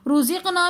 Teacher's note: رزقنا میں را کے اوپر پیش ہے تو ہم اس لیے ہم را کو موٹا پڑھیں گے